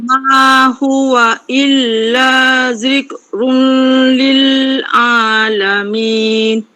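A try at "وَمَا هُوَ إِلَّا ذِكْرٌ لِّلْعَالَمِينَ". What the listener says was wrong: Okey, sama pada sebutan run tadi tak berapa jelas. Wa ma huwa illa zikrul lil jelaskan lil alamin.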